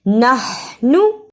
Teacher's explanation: نحنو کی ہا کو حلق سے رگڑ کر نکالنا ہے.